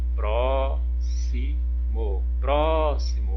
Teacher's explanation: a sílaba tônica é o pro